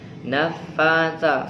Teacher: Sa, di atasnya juga ada tanda fathah berdiri termasuk mad asli. Nafasa, fa panjang 2 harokat, sa panjang 2 harokat.